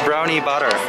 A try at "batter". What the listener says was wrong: It's funny because it sounds like you're saying brownie butter. Batter. Like a bat? Batter. No, okay, so butter and batter are two very different things. No, they sound the same. Yeah, what I'm saying is it sounds the same when you say butter or batter. Batter. Like a bat.